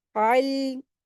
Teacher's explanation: आइन को हलक से अदा करते हुए लाम से मिलाकर पढ़ेंगे।